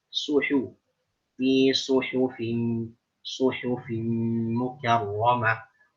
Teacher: Jangan fi suhufim, jangan seperti dhammahnya mengarah kepada o